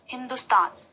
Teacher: लेकिन जब हमने हिंदुस्तान कहा तो वहां पर द में कम ऊर्जा खर्च हुई या फिर कम जोर पड़ा। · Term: लघु ऊ